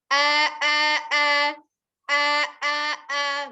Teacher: Nah, ya. Jadi dia tidak dari dada keluarnya ya, tapi tetap dari tenggorokan bagian bawah.